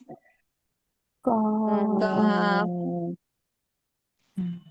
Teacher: জিহ্বার গোড়া থেকে একটু আগে বাড়িয়ে উপরে তালুর সঙ্গে লাগাবো